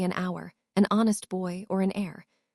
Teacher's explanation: Another key use is before words that begin with a silent H. So we say an hour, an honest boy, or an heir, where the H isn't pronounced at all